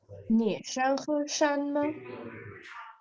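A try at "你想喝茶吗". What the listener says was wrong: अच्छा, अब मैं आपको दोबारा रिपीट करवाऊंगा, आपने टोन्स के साथ, आप पढ़ तो रही हैं, टोन्स का ख्याल नहीं रखती, तो आपने मेरे साथ रिपीट करना है।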